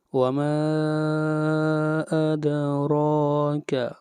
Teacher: ما کے اوپر مد منفصل 3 الف کے برابر کھینچ کر پڑھنا ہے. وما ادراک، اور را کو موٹا پڑھیں گے.